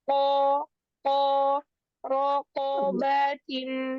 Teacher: Huruf Qaf baroja, jangan ada nafas yang keluar. Bukan ko, tapi ko, ko, rokobatin.